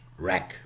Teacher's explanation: In modern English, wreck, because cluster reduction, bilabial, semivowel left out.